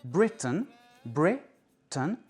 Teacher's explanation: les lettres A I N, inaccentuées, sont prononcées un. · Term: réduction vocalique